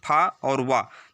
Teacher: ये दांत और ओठ दोनों जगह स्पर्श हो रहा है